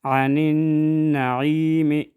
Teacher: عین میں یا مد آئے، ادھر ایک الف کے برابر کھینچ کر پڑھیں گے